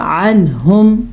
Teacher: عنہم، نون ساکن کے بعد ہا آ گیا تو پھر تو نون کو چھپانے کا جواز نہیں رہتا، کیونکہ ہا حروف اخفا میں سے نہیں ہے بلکہ حروف حلقی میں سے ہے، تو ہم نے اس کو کیا پڑھا؟ عنہم، بغیر غننے کے، بغیر چھپائے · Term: اظہار کا قاعدہ